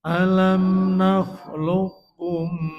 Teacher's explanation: Jadi qalqalanya hilang, tidak alam nakhluqkum tapi nakhluqkum. Karena diidghamkan sehingga sifat qalqalanya hilang. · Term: Idgham mutaqaribain